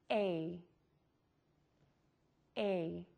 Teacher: people make the sound too short, and therefore it would sound something like eh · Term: A sound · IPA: /ei/